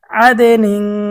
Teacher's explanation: এই গুন্নাটা নাকের থেকে বের হয়, নাকের পাশে থেকে আসে, এজন্য অস্পষ্ট বলা হয়।